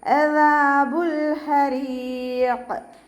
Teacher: ഹ തൊണ്ടയുടെ മധ്യഭാഗത്തു നിന്നാണ് വരുന്നത്. സൗണ്ടിന് ഹംസയായി പോവാതെ ശ്രദ്ധിക്കുക.